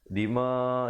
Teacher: Pertamanya dima itu dibacakan 4-5 harakat.